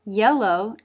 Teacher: tongue front mid pressing against the roof of the mouth and the tongue tip through for the L